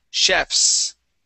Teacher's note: it's chefs with that voiceless S, okay? So if we don't have an ES at the end, okay, we pronounce that like an S sound, okay?